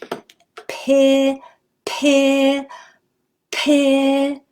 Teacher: Oh, my lips were so close together when I started, and then they opened up right away. P, and my mouth got bigger and my chin dropped. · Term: non-continuant sound